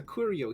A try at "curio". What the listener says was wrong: You pronounce curio like it's a brand of curry.